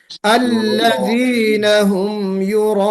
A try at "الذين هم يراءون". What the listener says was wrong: युराऊन भी नहीं होना चाहिए, आइन नहीं होना चाहिए, الذين هم يراءون،